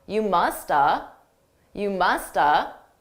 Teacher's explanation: I didn't actually say have. I reduced that entirely to just You musta.